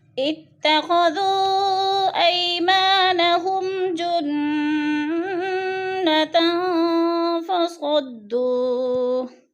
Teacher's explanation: اتخذوا پہ جو ہے مد منفصل ہے، 4 الفی مد ہے، 4 الف کے برابر ہم نے اس کو کھینچ کر پڑھنا ہے۔